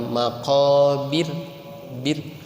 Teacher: Jadi getaran itu sekali saja. Maqabir ya, tipis, namanya tarqiq, dibaca tarqiq.